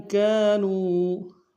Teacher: کاف کے ساتھ الف مدہ ایک امتداد میں کھینچیں گے، نون کو واو کے ساتھ ملانا ہے، واو مدہ کے اوپر چھوٹا سا مد ہے، کم سے کم 2 الف امتداد میں کھینچیں گے۔